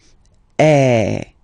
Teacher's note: the sound is really open, and normally your mouth should be opened a little bit more than with the accent aigu as well. Okay, so it goes like A.